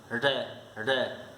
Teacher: लुंठित स्वर क्यों होता है? जब रे को आप बोलते हो ना तो जीभ तालु से लुढ़क कर स्पर्श करती है।